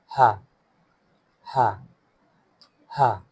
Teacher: it is also a throatal letter, and its voice comes from deepest part of the throat near chest